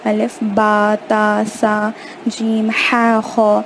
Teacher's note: جن کو الف، بے، تے سے اس طریقے سے پڑھے تھے اے والی ساؤنڈ میں، ان کو آ والی ساؤنڈ میں پڑھنا ہے